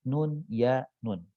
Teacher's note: huruf terakhir Nun ya Nun Nun itu punya sifat dengungkan ya huruf ya tidak punya sifat dengung huruf nun punya sifat dengung